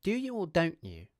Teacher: The vowel in 'don't' is the diphthong /əʊ/.